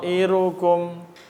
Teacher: dia panjangnya lima atau empat harakat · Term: mad bacaan panjang